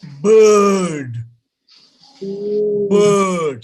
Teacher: we don't even speak the sound r at all